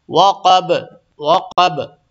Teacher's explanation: وقب پہ بھی قلقلہ ہوگا، یعنی آواز تھوڑی لوٹے گی